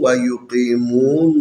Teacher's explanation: یہاں پر یا حروف مدی میں سے ساکن ہے، اس سے پہلے قاف ہے، قاف کے نیچے زیر ہے، یہ زیر یا کی مناسب حرکت ہے، اس کو تھوڑا سا کھینچ کے پڑھنا ہے۔ اس کے علاوہ یہ حروف مدی ہے، ساکن ہے، اور اس سے پہلے میم کے اوپر پیش ہے، یہ حروف واو کی مناسب حرکت ہے، لذا اس کو ایک الف کے برابر کھینچیں گے۔